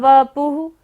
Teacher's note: विभ्राजते तव वपुः, वपुः पर क्या है? विसर्ग है, तो यहाँ पर सारी सांस का विसर्जन करना है